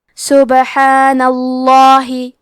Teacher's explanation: کیونکہ نون پہ زبر ہے تو لفظ الجلالہ کے لام کو تفخیم سے مطلب موٹی آواز میں پڑھیں گے